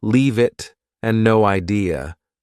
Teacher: Sometimes one word flows into another, for example, leave it and no idea. Both sound like they have no spaces between the words.